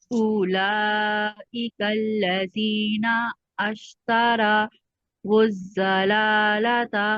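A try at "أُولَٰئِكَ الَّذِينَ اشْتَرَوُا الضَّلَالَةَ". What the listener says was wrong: अश्तरा नहीं, देखिए उलाइकल्लज़ी नश्तरा। अश्तरा देखिए हमजा नहीं है यहाँ पर, जो अश्तरा यहाँ पर करेंगे तो नून को डायरेक्ट शीन के साथ मिलाएंगे।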